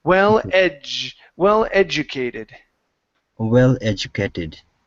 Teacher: you is the word well educated so it's j the J the D is going to be a j sound